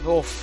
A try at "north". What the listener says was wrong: You can't say the TH.